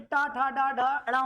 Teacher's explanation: तो ये जीव उल्टी होती है ऐसे लप लप करती हुई आती है इसको बोलेंगे मूर्धन्य ठीक है ये किससे स्पर्श करते हैं दंत से तो यह